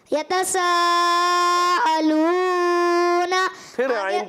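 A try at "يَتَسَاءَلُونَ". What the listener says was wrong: फिर आइन की आवाज आ गई। यतसा अलूना हो गई।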